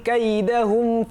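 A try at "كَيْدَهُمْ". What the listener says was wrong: কাইদা না পড়ে একটু কাইদা, একটু হামস বাতাস দিতে হবে। কাইদাহুম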